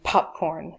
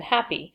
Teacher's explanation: an aspirated P versus an unaspirated P, like in popcorn.